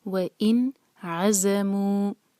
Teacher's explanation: نون کو کلیئر پڑھیں گے کیونکہ نون ساکن کے بعد عین آ رہا ہے جو ہے حروف حلقی